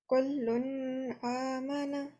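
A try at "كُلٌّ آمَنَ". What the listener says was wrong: So there is no shadda on the there's no shadda on the lam. So we don't say kullun, we say kulun. It might be a mistake in printing, but the way that it's written here, it's kulun amana.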